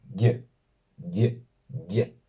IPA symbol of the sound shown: j ~ ʝ